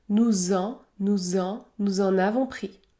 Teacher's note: on effectue la liaison entre les deux pronoms nous et en le S se prononce Z Z nous en nous en nous